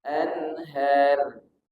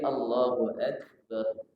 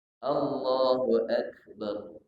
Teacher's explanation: Jadi mati. Ro sukun atau ro mati sebelumnya berbaris fathah dibaca tebal.